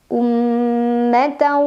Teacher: tanwin fathah dimasukkan atau dileburkan ke huruf waw sambil dengung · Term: idgham bi gunnah